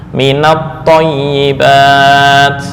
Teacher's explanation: Min ketika disandarkan ke isim, maka nun yang asalnya sukun diberikan harokat penolong berupa fathah.